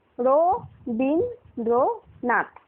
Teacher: উচ্চারণ যখন করছি রো বিন, রো রো এর পরে কিন্তু অ উচ্চারণ হচ্ছে, ওই জন্য আমরা এর নিচে হসন্ত দিলাম না।